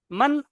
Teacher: নুন সাকিনের আওয়াজ জাহির করতে হবে মানে পরিষ্কার করে নুন সাকিনটা বের করতে হবে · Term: ইজহার